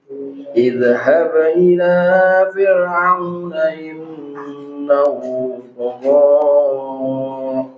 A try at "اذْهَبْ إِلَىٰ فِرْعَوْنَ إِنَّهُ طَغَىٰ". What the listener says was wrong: Huruf zal jangan dikolkolah. Idhab jangan, tapi idhab ila.